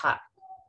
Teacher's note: agak ditekan, agak dihimpit ya di huruf halkinya atau di tenggorokannya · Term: H apostrop